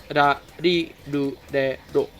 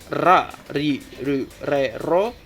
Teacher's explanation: it sounds not like R, but not like D too. So it's like in the middle of R and D